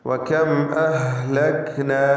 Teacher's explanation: സാക്കിനത്ത് മീം ശേഷം ഹംസ. ഇവിടെ ഇൽഹാർ ഷഫവിയാണ്, മണിക്കാതെ വെളിവാക്കണം.